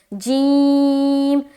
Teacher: اسی طرح سے یہ حرف جیم ہے، جیم، جیم بھی تھوڑا سختی سے ادا کریں گے، جیم، دانتوں کو دباتے ہوئے، جیم۔ زبان کا بیچ سے یہ ادا ہوتا ہے جیم، اور اس کے اوپر جو مقابل اوپر کا جو تالو ہے وہ دونوں کو ٹچ کرتے ہوئے جیم ہم ادا کرتے ہیں